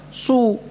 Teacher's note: Ini selain pada huruf shad yang berharakat dhammah ya. Kalau huruf shadnya dhammah ya memang harus mencucu. Bukan karena shadnya, karena harakatnya dhammah ya.